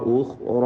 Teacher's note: ഉഖ്റ ഖാ റാ റാഇൻ്റെ അലിഫ് ഇതൊക്കെ തഫ്ഖീം ചെയ്ത് ഉച്ചരിക്കേണ്ട അക്ഷരങ്ങളാണ്. തടിപ്പിച്ച് ഓതുക.